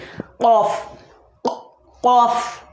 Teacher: जड़ जबान तालू से मिलकर कौफ अदा होता है